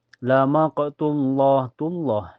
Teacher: Ini di lafaz Allah, lafaz jelala dibaca tebal ya karena sebelumnya berharakat domah atau di atas dibaca tabhim ya.